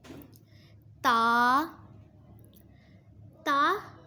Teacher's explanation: زبان کی نوک اور اوپر کے دانتوں کی جڑ سے ادا ہوتے ہیں۔